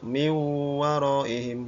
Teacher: Karena nun mati bertemu waw, maka dibaca min waraihim. Nun matinya hilang, masuk ke dalam huruf waw. Ya. Ini namanya idgham bil gunnah.